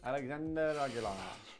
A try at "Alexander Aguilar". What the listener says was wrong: Not Aguilar, there's no I.